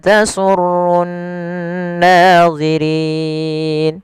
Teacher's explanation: Rinya dipanjangkan di sini boleh dua harakat, boleh empat harakat, dan boleh pula enam harakat. Yang mana ini kita namakan dengan bacaan mad arid lisukun.